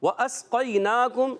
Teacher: واو کی ادائیگی ہونٹوں کی گولائی سے. پھر الف نہیں ہے، حمزہ ہے.